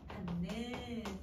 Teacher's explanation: 그러면 여러분 디귿이 누구로 바뀌어? 니은으로 바뀌어. 그럼 발음하면 받는 이렇게 소리가 나는데, 그럼 자 여기 같은 경우는 여러분 서로가 서로에게 영향을 줬으니까 상호동화인 거 알겠죠?